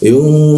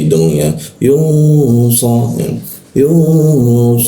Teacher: Nah, nun bertemu sh. Nun bertemu sh itu kita dengungkan, kita tahan dua kan.